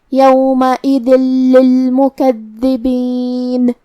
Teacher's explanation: ہم یہ تنوین کو لام میں ملا کے بغیر غنہ سے لیکن تشدید کے ساتھ یہ حکم کو ادا کریں گے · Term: الادغام بغیر غنہ